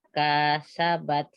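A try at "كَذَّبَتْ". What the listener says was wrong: Zalnya bertasdid, diulang lagi. Zalnya bertasdid.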